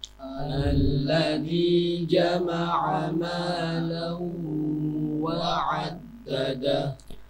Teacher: Bacaan Idgham bighunnah . Itu dilakukan dengan memasukkan huruf pertama ke dalam huruf berikutnya. Dalam hal ini, tanwin langsung masuk ke huruf waw. Mau mau dibaca dengan bunyi sengau.